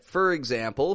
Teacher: two pronunciations it can be for or it can be fur we pronounce this as fur when it's in the beginning of a sentence · in the beginning of a sentence or in the middle of a sentence we reduce it to a fur and we link it to the following word